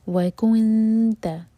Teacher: جب نون پر پہنچیں تو ہونٹ گول نہ رہیں اور نون پر اخفا کریں گے